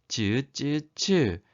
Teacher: 혓바닥과 단단한 센 입천장에서 나는 소리라는 거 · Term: 센 입천장 소리